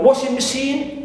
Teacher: washing machine also we stress the first part which is washing